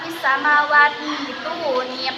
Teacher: Badal atau ibdal mengganti huruf hamzah dengan ya mati.